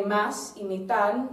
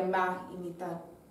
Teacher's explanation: un poco más débil en la pronunciación del S y D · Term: aspiración del S